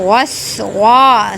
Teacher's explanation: سین کی ادائیگی میں سیٹی کی آواز نکالیں گے